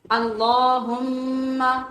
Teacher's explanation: لام پور ہے، دوسرے کھڑی زبر کی وجہ سے لمبا ہے، تیسرے میم کے اوپر شد ہونے کی وجہ سے ہم غنہ کریں گے۔